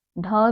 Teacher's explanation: मूर्धा से उत्पन्न होने वाले यानी कि मुख के भीतर के छत का अगला भाग टच करती है हमारी जीभा।